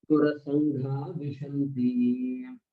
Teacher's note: Sangha is sangaha. Because the visarga after the dirgha akara is followed by a soft consonant, the visarga will drop.